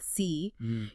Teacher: your tongue is high and forward in your mouth and that creates a smaller resonant space